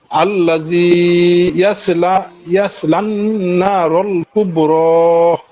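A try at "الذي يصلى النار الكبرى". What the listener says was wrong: আল্লাযী, এখানে পাতলা হবে, ইয়াসদ উচ্চারণ হয়নি, এতটুকু আবার বলেন পরেরটা আবার।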